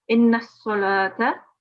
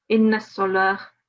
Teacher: So for example, if we were to continue, we would recite this one as inna salata. However, if we were to pause, the ta marbuta at the end will change into a sakin ha. So it will be read as inna salah.